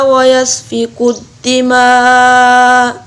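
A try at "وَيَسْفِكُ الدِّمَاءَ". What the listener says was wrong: इस मद को पूरा करें।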